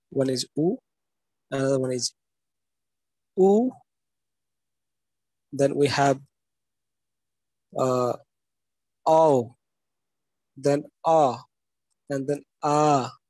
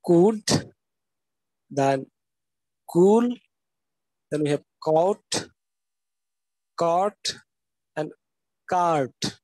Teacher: One is oo, another one is oo, then we have ow, then ah, and then ah, and the words that we can use over here is could, then cool, then we have caught, caught, and cart. Okay, so these are the back vowels where the back of the tongue and the soft palate comes closer or touch each other to pronounce all these sounds